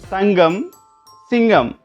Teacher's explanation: ஒலிக்கின்றது உதாரணம் தங்கம் சிங்கம் இங்கு நகர மெய்யை அடுத்து ககரம் வந்துள்ளது இவ்வாறு சொற்களில் நகர மெய்யை அடுத்து வரும்போது ககரம் மாறி ஒலிப்பதனை நாம் அவதானிக்கலாம் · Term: மாற்றொளியாக